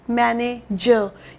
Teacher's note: you will always find that in the end they never use the sound r. rather वो तो last part बोलते ही नहीं है.